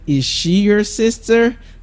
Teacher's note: we're going to be using the rising tone for our yes/no questions